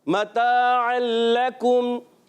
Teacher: हरकत को बगैर खींचे हुर्फ़ मद्दा एक अलिफ खींच कर अदा करेंगे, ऐन की अदायगी हलक के दरमियान वाले हिस्से से